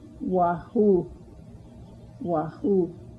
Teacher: stress on the second syllable of waho waho